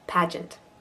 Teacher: Ent is a schwa.